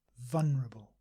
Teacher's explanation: many English people simply say vulnerable without the L